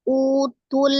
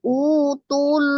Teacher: Jadi tidak dipanjangkan tu-nya, langsung disukunkan ke huruf lam.